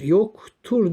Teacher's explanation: bu ek buradaki D harfinin t'ye döndüğünü ünsüz benzeşmesinin olduğunu görüyoruz